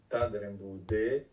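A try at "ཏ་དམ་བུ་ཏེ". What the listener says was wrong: T, le T reste T. Tadembute, quand il est tout seul, le ta reste T. Alors, douk, parce que quand il est combiné avec d'autres lettres, le ta devient da.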